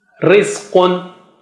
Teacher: When you have to say ri, automatically ri will become thin. Ra will become thin.